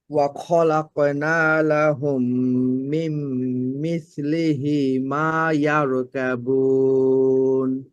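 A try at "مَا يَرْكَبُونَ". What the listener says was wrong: রটা কিন্তু মোটা হয়নি, এখনো ভারী হয়নি, ইয়ারকা, ইয়ারকাবুন।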